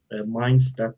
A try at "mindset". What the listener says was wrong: Mindset, not mind step.